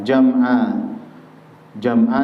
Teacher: jama di situ Ain dipanjangkan dua harakat